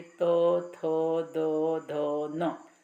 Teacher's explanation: अपनी जीभ जो है वो दांतों को स्पर्श करती है, तो इसीलिए त वर्ग को दन्त्याः कहते हैं।